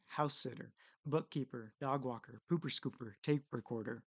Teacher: the first syllable also pops out in compound nouns